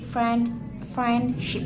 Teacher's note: The D sound is weak.